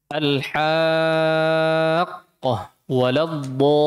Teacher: Mad lazim wajib 6 harakat. Tidak boleh dikurangi.